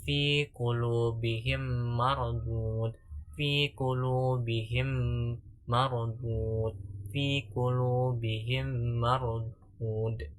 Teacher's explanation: Idgham mithlain adalah huruf nun mim sukun bertemu dengan mim, kemudian cara membacanya itu dengan memadukan eh, kedua huruf tersebut, lalu dibaca dengan dengung, suara dengung, lalu dibacanya itu selama satu alif atau 2 harokat